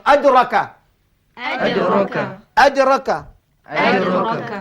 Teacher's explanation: Dia tengok hujung lidah diangkat ke pangkal gigi hadapan yang di atas selepas makhraj huruf ta. Ta di hadapan dal terkebelakang sedikit. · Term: huruf dal